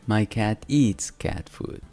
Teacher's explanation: la s al final de eat se pronuncia s o sea sin vibrar porque la t no es Sonora al pronunciar nuestras cuerdas vocales no vibran y la vemos también